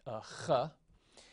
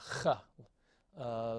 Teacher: It's really a sort of a rough breathing of an H, a ch, and it looks like that in the printed. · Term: chet